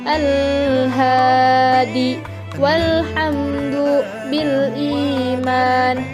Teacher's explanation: Al-qamariyah adalah al atau alif lam mati yang bertemu dengan salah satu huruf qamariyah dan dibacanya jelas atau idhar